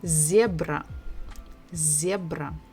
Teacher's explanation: So we stress the first syllable, zebra, zebra.